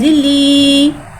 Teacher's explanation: या साकिन है, या साकिन से पहले ज़ेर आ रहा है, या मद्दा हो रहा है, लिहाजा या मद्दा को एक अलिफ यानी 2 हरकत के बराबर खींच के पढ़ेंगे।